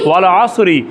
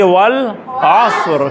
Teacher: جب اس کو وقف دیں گے، آخر میں جزم دیں گے اس کے اوپر، تو یہ را ساکن ہو گیا. پڑھیں گے والعصر.